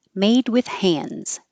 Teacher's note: you won't hear the D in hands at all